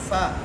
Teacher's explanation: ہونٹوں کے درمیان والے حصے سے اور اوپر کے دانتوں سے